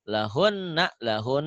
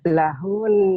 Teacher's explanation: Cara mewakafkannya adalah suara hun ditekan dan ditahan 2 harokat.